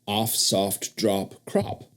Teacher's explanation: people pronounced the vowel in words like off soft drop and crop with the a sound of hot